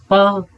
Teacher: इसका ओष्ठ स्थान स्पृष्ट प्रयत्न